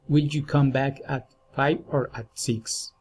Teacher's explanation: Alternative questions raising and falling intonation.